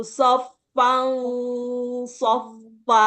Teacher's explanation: dengungnya ada di dekat gigi seri bawah karena shad tempatnya di situ shoan shoa Jadi tidak semata lidahnya saja yang sudah bersiap di huruf shad, tapi suaranya juga mengikuti.